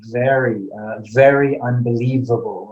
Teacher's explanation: a v sound okay is just like an f but voice okay so it's a voiced f sound